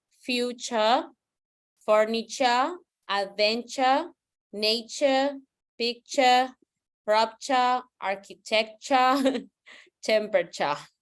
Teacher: in British pronunciation, the R doesn't sound